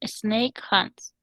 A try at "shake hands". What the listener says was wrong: that's a H. Parece una N, ¿verdad? But it's a H. Shake hands.